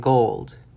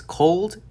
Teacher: when saying gold, you should feel an extra vibration, which comes out of the vocal cords, while when saying cold, there's either not as much as a vibration or no vibration at all. This is called voicing.